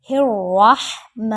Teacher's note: بسم اللہ الرحمن، را موٹا کریں گے، را کے اوپر زبر ہے، ہا کو حلق کے درمیان سے لے کر آئیں گے اور میم کو ایک الف کے برابر یعنی 1 سیکنڈ لمبا کر کے پڑھیں گے